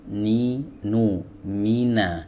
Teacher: huruf nun keluar dari ujung lidah ya bertemu dengan gusi di atasnya